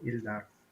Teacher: It's the stress on the second syllable, Ildar. Ildar.